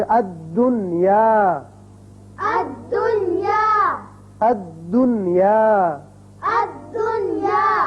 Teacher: نون کا اظہار ہوگا، اسی قاعدے کا نام اظہار مطلق ہے